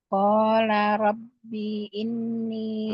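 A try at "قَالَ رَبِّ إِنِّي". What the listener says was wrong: Nggak panjang. Qala rabbi inni.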